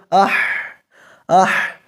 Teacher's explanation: ایئر فلو ہمارے ہاتھ کو ٹکرا رہا ہے لیکن آواز کم ہو رہی ہے کمزوری کی وجہ سے